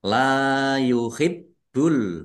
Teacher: Mad thobi'i dibaca panjang dua harakat